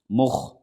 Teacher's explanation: خا حروف مستعلیہ میں سے ہے، خا موٹا پڑھا جائے گا